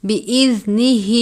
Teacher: یا 3 الف کے جتنا کھینچ کر پڑھتے ہیں، الا بِإِذْنِهِ، زال کو نرمی سے پڑھتے ہیں، کھڑی زیر ہے، ایک الف کے جتنا لمبا کر کے پڑھیں گے ، بِإِذْنِهِ، اس طرح زیادہ مختصر یا زیادہ لمبا نہیں کرنا،